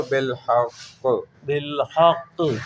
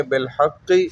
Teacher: جب وقف کریں گے تو بالحق، آخری حرکت، حرف کی آخری حرکت نہیں پڑھیں گے